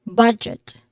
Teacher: Our has an O diphthong, And then budget, it has a stress on the first syllable with a short O sound